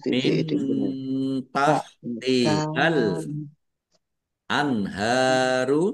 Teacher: nun sukun bertemu dengan huruf ta bacaan ikhfa dibaca samar-samar. Al anharu alif lam komariah ditandai lamnya dibaca sukun.